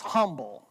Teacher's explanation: In the North, you pronounce the H, right?